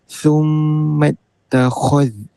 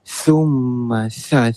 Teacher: Kha tebal. Sa nipis, lidah dekat atas gigi.